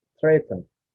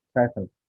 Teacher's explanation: Syllabic N is most commonly found after alveolar plosive